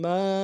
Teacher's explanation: ما کے بعد جو ہے الف مدہ ہے، اس کو ایک الف دار میں کھینچتے ہیں